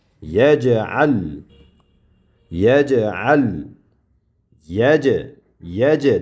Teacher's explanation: Sukun qilish, qalqalik qilish kerak. Sukunlik bo'lgan paytida jim harfini qalqala sifati bor. Qalqala qilib talaffuz qilinadi.